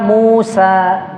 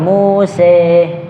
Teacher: Kalau kita Musa biasa. Bil imalah nahwal kasri. Yaitu condong ke kasrah. Muse kayak gitu.